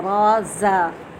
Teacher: ज़ा में भी देखें वैसे सीटी है और ज़ा में सख्ती भी होती है